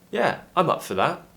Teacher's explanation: traveling up for something usually pronounced as up for up for because four is not usually a very important word so we pronounce it in its weak form which is we use the schwa sound instead of the or